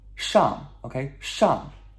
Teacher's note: S-H-A-N-G, fourth tone, descending tone